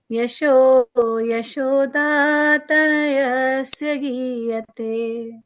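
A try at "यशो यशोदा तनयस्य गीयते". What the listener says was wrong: So you swapped the high pitch with the low pitch and low pitch with high pitch.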